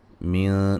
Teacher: من نون ساکن کا اخفا ہے باریک